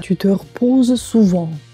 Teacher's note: В сочетании односложное слово типа согласный плюс «э» немой плюс следующее слово, которое начинается с приставки «р», первый «э» немой произносится, а «э» в приставке «р» опускается.